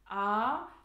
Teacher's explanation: Wenn du jetzt, beobachte mal, wenn du jetzt ein A sprichst, A, dann hast du den ganzen Mundraum zur Verfügung, weil die Zunge liegt flach im Mund drinne beim A